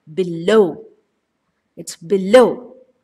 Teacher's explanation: the stress is always on the second syllable